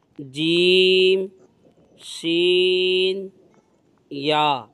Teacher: یہ 3 حروف ہیں جو زبان کے درمیان اور تالو کے درمیان والے حصے سے ادا ہوتے ہیں۔ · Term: حروف شجریہ